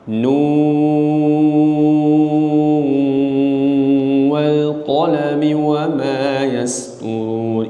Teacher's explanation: Al-Imam Syu'bah ketika membaca surah Al-Qalam dan surah Yasin membaca dengan idgham. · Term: idgham riwayah